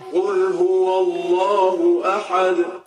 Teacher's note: جب آپ اس آیت پر رکیں گے تو تنوین کے بجائے یہ ساکن ہو جائے گا، جزم ہو جائے گا اور پھر اس پر قلقلہ ہوگا